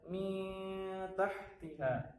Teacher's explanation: Jadi bukan min tahtiha tapi dengan dengung. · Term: ikhfa hakiki